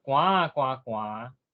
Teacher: 三个字的时阵第一个字就要变做第九调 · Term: 3连音的变调